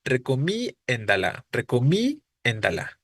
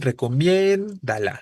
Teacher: está escrito diría recomi endala recomi endala no pero es recomiéndalo Es sobre la e es diptongo por lo tanto es la e la que se debe acentuar